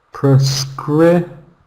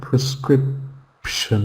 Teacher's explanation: So the first and the last syllable has a schwa sound in this word, prescription.